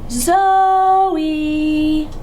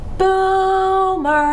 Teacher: the first syllable is the stressed syllable that means I say it with more emphasis than the second